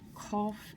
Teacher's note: it's a K sound way back in your throat it's a hard K